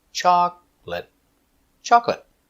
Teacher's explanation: Stress is on the first syllable.